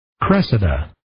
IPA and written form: 'kresɪdə (Cressida)